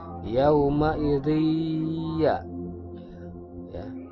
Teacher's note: Ya ini termasuk ke dalam huruf idgham bi gunnah. Jadi membacanya harus didengungkan, harus ditahan dulu.